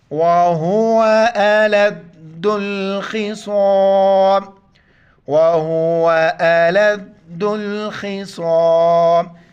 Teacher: پھر دال کو لام کے ساتھ ملائیں گے, الف کو نہیں پڑھیں گے